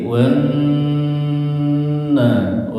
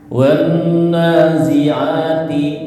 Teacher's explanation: Suara yang keluar ya dari hidung ditahannya. Jadi ee agak sabar ketika ada huruf nun dan mim bertasydid. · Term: Gunah